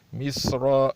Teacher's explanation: صاد کی جو صفت ہے سخت اور موٹی ہے، ایسی سخت اس پہ بھی سیٹی کی سی آواز نکلنی چاہیے